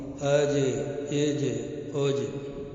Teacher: جیم میں قلقلہ ہے، اس لیے اس میں آواز مخرج سے واپس ہوگی